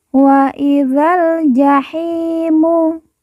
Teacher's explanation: Hi kita baca panjang 2 harokat karena di depannya terdapat huruf ya sukun atau ya mati yang merupakan tanda baca panjang 2 harokat.